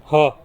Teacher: ये हल्क के नीचे वाले हिस्से से अदा होता है